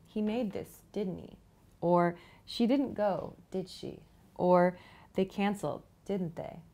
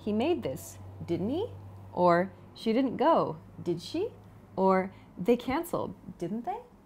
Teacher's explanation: if you want to actually ask someone for information make sure to use upward intonation